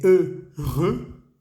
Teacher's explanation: La H no existe, no se pronuncia. EU se dice E y EUX se dice E también.